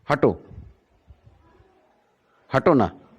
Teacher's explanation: hato takes more time, na takes less time